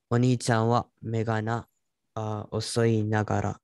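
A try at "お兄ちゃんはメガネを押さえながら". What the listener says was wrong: So you said osoi. Yes, osai nagara.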